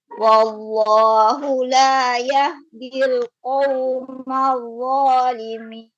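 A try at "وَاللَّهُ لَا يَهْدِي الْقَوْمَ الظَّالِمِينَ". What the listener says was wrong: Ulangi. Wallah. Tebal lagi.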